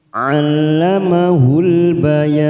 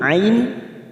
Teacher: ain kita membacanya jangan disamakan dengan hamzah, ini lebih dalam. Al masuk pada huruf lam yang bertasdid.